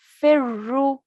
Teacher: Fa will join on to the ra mushaddad because it's a ra with a shadda. So we'll join on with force to the previous letter. And we also have a dhamma on the ra.